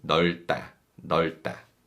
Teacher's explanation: And this descriptive verb 넓다 uses the 겹받침 리을 비읍, but the second 겹받침 비읍 is silent and we read the first 겹받침 리을